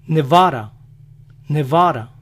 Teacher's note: ellos pronuncian la de entre vocales como nuestra ere